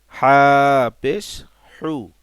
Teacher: কণ্ঠনালীর মধ্যখান থেকে আইন হা উচ্চারিত হয়, সেইখান থেকে হবে হা পেশ হু। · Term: ছোট হা